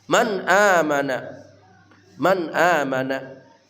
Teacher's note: nun mati bertemu hamzah dibaca jelas nunnya terang ya izhar halqi